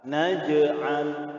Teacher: Cara membacanya ialah dengan memantulkan suatu huruf atau suara huruf tersebut secara ringan dan lemah. Ya, suaranya lembut, ringan, ya, tidak dipantulkan dengan secara kasar atau tebal. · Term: qalqalah sughra